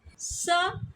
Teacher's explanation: स अघोष वर्ण है।